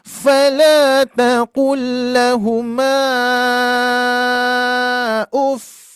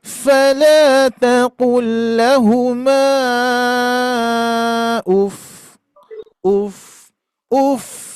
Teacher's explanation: Menunjukkan bunyi tasdid di situ harus ada penekanan naik iramanya ya. Iramannya naik.